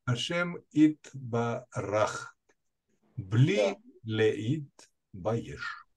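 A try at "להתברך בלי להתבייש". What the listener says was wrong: Ну, хорошо.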